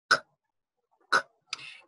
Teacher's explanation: the back of the tongue going up to produce that k sound